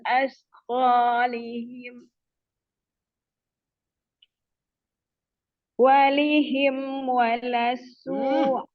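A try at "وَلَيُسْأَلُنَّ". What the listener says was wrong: Apa walihim dari mana kok walihim? Langsung aja walayus anun.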